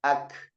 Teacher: Terhenti suara tapi napas tetap mengalir. Kenapa? Karena dia hamas seperti itu. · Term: syiddah